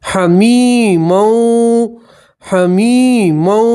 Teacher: یا مدہ اس لیے ایک الف کے برابر کھینچیں گے